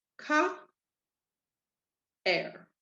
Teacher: you're going to hear both vowels because they are in two separate syllables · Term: two strong vowels